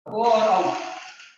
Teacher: ओ और औ का उच्चारण स्थान कंठ और ओष्ठ है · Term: कंठोष्ठम